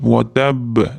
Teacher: Va tab oxirida b'da ham tashdidli b kelyapti, ham sukun bilan to'xtayotgani uchun qalqala qilib va tab deb to'xtaymiz.